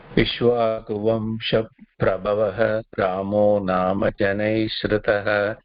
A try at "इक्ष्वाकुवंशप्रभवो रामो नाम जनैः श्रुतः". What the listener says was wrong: ஸ்ருதः பூர்த்தியா உக்காரம் சொல்லலாம். ஸ்ருதः வேணா, ஸ்ருதः ஊ ஃபுல்லா. அது உக்காரம் கீழே இருக்கு இல்லையா?